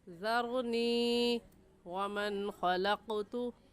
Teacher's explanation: क्योंकि ये कायदा तख्ती नंबर 8 में हम पढ़ चुके हैं कि या साकिन से पहले ज़ेर आ जाए, या साकिन से पहले ज़ेर आ जाए तो वो या मद्दा कहलाता है, और या मद्दा को एक अलिफ की मिक़दार खींच कर पढ़ते हैं